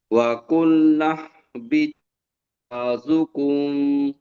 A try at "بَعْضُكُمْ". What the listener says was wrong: বাযুকুম বলে টান হয়ে যাচ্ছে। বাযুকুম।